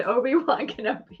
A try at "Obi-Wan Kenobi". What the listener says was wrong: It was like she like hardcore pronounced the one. Obi-Wan Kenobi. It's Obi-Wan. It's very smooth.